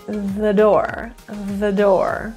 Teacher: a lot of rules in North American English but typically t-h-e if there is a consonant coming after that word we're going to reduce it to a schwa it's an uh sound